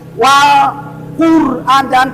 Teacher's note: Nah lam dari mana? Ujung lidah dengan langit-langit.